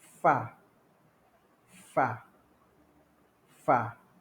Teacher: Menekan bibir bawah ke gigi kacip atas.